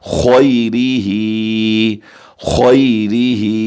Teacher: وَالْقَدْرِ، وَالْقَدْرِ خَيْرِهِ، خا حروف مستعلیہ میں سے ہے، ہم اسے پر کر کے موٹا کر کے پڑھیں گے، اور یا ساکن ہے، اس سے پہلے خا پر زبر ہے، یا ہم یا مدہ کریں گے، اور را کے نیچے زیر ہے، ہم اسے باریک پڑھیں گے، ہا کو کھینچ کر پڑھیں گے، اس کے نیچے کھڑی زیر ہے، کیسے؟